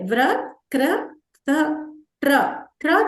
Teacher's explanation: ట్ర కూడా మనం ఏంటి ట ని సగం పలుకుతున్నాం ర పూర్తిగా పలుకుతున్నాం.